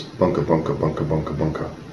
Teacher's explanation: Someone who has a Finnish accent will tend to hit every other word with the stress